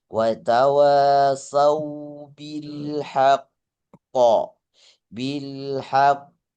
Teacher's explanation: illalladzina amanu wa amilus solihati wa tawasaw bil haqq wa tawasaw Watawa, kalau mau diwakaf hak koknya itu diberikan qalqalah. Qalqalahnya di sini qalqalah akbar. Qalqalah paling besar. Jadi ditahan baru dilepaskan pantulannya.